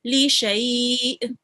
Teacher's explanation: let me hear the hamza sound, the jerking sound, for a little bit at the end.